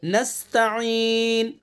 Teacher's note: आइन को साफ अदा करना है हलक से, हलक के बीच से